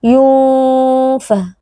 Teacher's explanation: Yunfa, ikhfa hakiki karena terdapat nun sukun yang bertemu dengan huruf fa, cara membacanya adalah dengan didengungkan dengan dengung yang samar